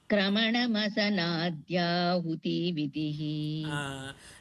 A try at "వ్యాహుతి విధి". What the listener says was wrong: యాహుతి దీర్ఘం అక్కర్లేదండి, స్మాల్ గానే చిన్న లెటర్ లఘువు. వ్యాహుతి విధి.